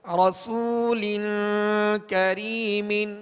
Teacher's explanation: رسولن, سین پر پیش بھی ہے لہذا ہونٹوں کو کامل گول کر کے ادا کریں گے. لام کے نیچے 2 زیر کی تنوین ہے, آگے کاف حروف اخفا میں سے ہے لہذا غنہ کر کے پڑھیں گے